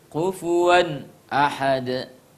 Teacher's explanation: sempurna melebur kedalam problem walam yakullahu kufuwan ahad kufuwan ahad Yes ada fathatain ketemu dengan Hamzah itu adalah bacaan izhar yang harus dibaca dengan jelas tidak boleh dibaca dengan kufuwan salah harus kufuwan Ahad Jadi sebetulnya